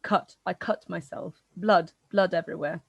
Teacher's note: this foot strut split has taken place in some of shropshire particularly along the welsh border